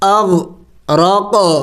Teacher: حمزہ غین زبر اغ، را قاف زبر رق، آگے قاف حروف قلقلہ میں سے ہے، ساکن ہے، قلقلہ کرنا ہے، یعنی ہلا کے پڑھنا ہے